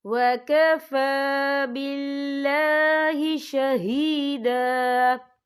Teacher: فا کے اوپر کھڑی حرکات ہے، تو ہم یہاں 2 یا 3 حرکت کے برابر کھینچیں گے · یہاں اللہ کا نام باریک پڑھا جائے گا کیونکہ اللہ کے نام سے پہلے زیر ہے